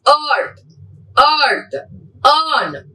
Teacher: Central unrounded vowel between half close and half open.